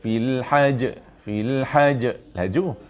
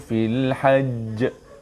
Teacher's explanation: Tuan-tuan berhenti di sini menjadi qalqalah akbar, lebih besar kerana ada sabdu.